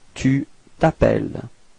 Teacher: final S is not pronounced